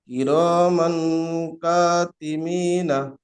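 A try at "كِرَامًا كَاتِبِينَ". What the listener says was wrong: মিম হয়ে যাচ্ছে, বুঝতে পারছেন? কিরামান কাতিবিন, শোনেননি? কিরামান কাতিবিন। মিন নয়, কাতিবিনা।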